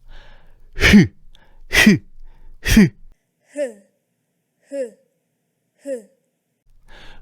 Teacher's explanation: 성대가 좁아지면서 마찰이 일어나서 만들어지는 소리야. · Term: 목청 소리